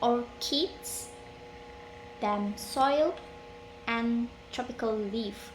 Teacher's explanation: Rising intonation is used for descriptive list.